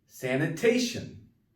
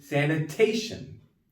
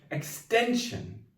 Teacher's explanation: The part right before the ION, the second to last syllable is stressed.